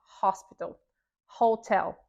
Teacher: o nosso famoso H, que esse tem o nosso som de R, o nosso som de rato.